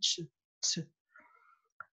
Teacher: Au moment de lâcher la lettre, si elle n'est pas bien placée, si elle situe pas la lettre au bon endroit, qu'elle la situe là, au moment de lâcher, le son va aller cogner derrière la face interne des dents. Ça va faire quelque chose comme tch, tch.